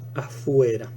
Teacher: tenemos una fricativa labiodental que vemos que se modifica en una fricativa velar